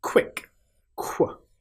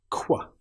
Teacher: Now this sound, as we discussed before, is like k followed by w